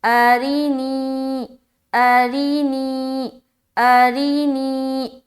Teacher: حمزہ زبر را زیر ری، نون یا زیر نی، ارینی ارینی ارینی، را بھی باریک اور نی میں کھینچنا بھی ہے